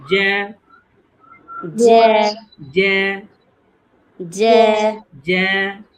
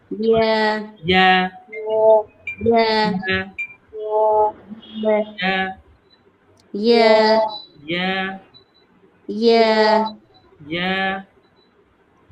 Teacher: হ্যাঁ, ওই জ্যা ইয়া, উচ্চারণ যেখান থেকে হচ্ছে, জ্যা বললে কিন্তু জিহ্বার মধ্যখান দেখবেন উপরে তালুর সাথে লেগে যাচ্ছে